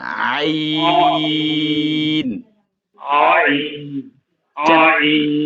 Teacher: আইনটা হচ্ছে গলার মাঝখানে গলার মাঝখানে চাপ দিবেন হালকা চাপ দিবেন